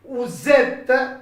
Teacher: Get a Z sound, sort of Z sound. Vous êtes. Okay, consonant vowel together.